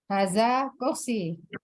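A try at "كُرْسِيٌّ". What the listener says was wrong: Iya, kursiyun. Dibaca domatainnya ya, Umi?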